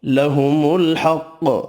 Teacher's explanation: الحق، قاف حروف مستعلیہ پر پڑھیں گے، وف کی صورت میں قاف ساکن پڑھا جائے گا اور قاف ساکن پر قلقلہ بھی کرنا ہے